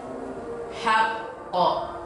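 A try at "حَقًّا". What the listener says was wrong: Kurang tebal sedikit. Haqqo. Jangan lemah pantulannya, harus kuat. Karena dia qalqalah kubro. Berarti pantulannya kan kuat, besar gitu. Haqqo.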